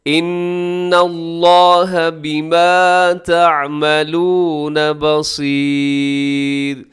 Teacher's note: ان یہاں نون مشدد ہے، یہاں غنہ کیجیے گا